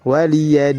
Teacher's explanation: Waliyadin panjang sampai 6 harokat, dihukumi mad arid lis-sukun.